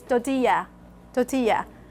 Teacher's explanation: The T, they don't do the aspiration. They do the unaspirated part. So they cut the pi here.